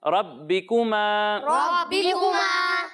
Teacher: را کو موٹا پڑھنا ہے